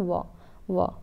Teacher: व जो होता है हमारा ये दंत और निचले ओट से होता है